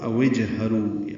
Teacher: او اور اجہرو، اوجہرو ہوگا، واو کو جیم سے ملا دیں گے، بیچ والا الف نہیں پڑھا جائے گا، جیم ساکن پہ قلقلہ ہوگا تو اوجہرو، او سے اوج بنا ہے، اوجہرو۔